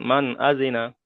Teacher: তাই নুন সাকিনের আওয়াজকে বিনা গণনায় জাহির করে তাড়াতাড়ি পড়তে হবে।